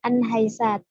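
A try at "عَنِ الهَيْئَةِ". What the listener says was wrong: Alif lamnya dibaca anil haisyati.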